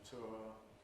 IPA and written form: tʊə (tour)